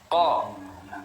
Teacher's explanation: Ko, tidak ada nafas yang keluar. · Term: al-jahr